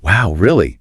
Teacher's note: you significantly raise the pitch and volume of your voice to signal an emotional spike